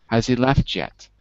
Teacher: Don't exaggerate the ch too much. It's not that strong.